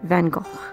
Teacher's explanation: Vincent himself would have pronounced the latter syllable of his name with a short o and a hard, guttural ch, like in Loch.